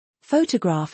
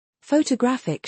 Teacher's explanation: Photograph has first syllable emphasis. Photographic shifts it to the third.